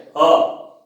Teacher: ह का उच्चारण काकल से होता है, बिल्कुल कंठ के निचले भाग से ह यहां से उच्चारण होता है।